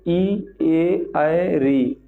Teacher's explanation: ऐसा लग रहा है कि हम अगली पार्ट से बोल रहे हैं, जो हमारा टंग है, लेकिन अ बोल रहे हैं तो ऐसा लग रहा है कि मध्य में जा रहा है, ठीक है ना। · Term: अग्र स्वर